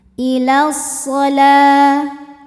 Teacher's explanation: ilas kemudian alif lamnya dinamakan dengan alif lam syamsiyah karena alif lam menghadapi huruf sam eh syamsiyah yaitu huruf shod maka alif lam ini tidak kita baca atau disebut dengan idghom syamsi. Ya, jadi langsung masuk ke shad. · Maka alif lam ini tidak kita baca atau disebut dengan idgham syamsi. Ya, jadi langsung masuk ke shad.